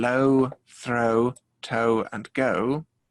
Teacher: oh starts as a fairly tall mouth and gets smaller